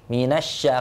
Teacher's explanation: karena shin ini tempat keluarnya atau makhrajnya dia di tengah lidah mengarah ke langit-langit